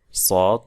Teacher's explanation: সদ দ স্বাভাবিকভাবেই আমরা বললেই জিহ্বার তালু উপর দিকে উঠে যাবে। সদ বলতে গেলে জিহ্বার মধ্যখানটা উপর দিকে উঠবে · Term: ইতবাক